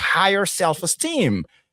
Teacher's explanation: le stress qui est sur la deuxième syllabe dans selfestem